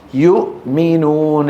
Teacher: الميم من الشفتين والهمزة من أقصى الحلق، إظهار